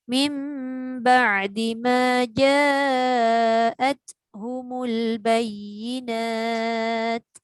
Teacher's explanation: Jangan pendek, panjang tu. Tak apa, ambil sikit dekat mim ba'di tu sebab dia tak cukup dengung.